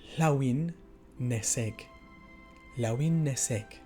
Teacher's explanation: The H is not really voiced, so it kind of comes before the L sound